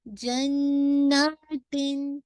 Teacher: नून का मुशद्दद है ना, तो नून पे आपका गुन्ना है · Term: अकमल गुन्ना